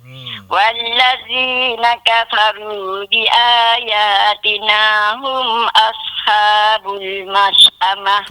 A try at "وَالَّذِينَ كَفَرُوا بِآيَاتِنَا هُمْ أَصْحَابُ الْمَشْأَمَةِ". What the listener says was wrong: Kembang sikit sebutan ra kafaru. Jangan kafaru ru. Dia jadi sempit. Ru, kita kembangkan lidah kita.